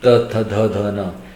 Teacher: the Ta Varga, which is produced by the dental area, that is the teeth